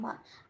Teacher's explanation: मीम, मीम पर ज़बर है, नहीं खींचेंगे। मा, मीम दोनों होठों के सूखे हिस्से से अदा होता है